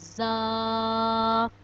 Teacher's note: جب ہماری زبان کی نوک اوپر اور نیچے کے اگلے دونوں دانتوں کے درمیان آ جائے گی تو زا ادا ہوگا۔ زا کو ہم ایک الف کے برابر لمبا کرتے ہیں، زا۔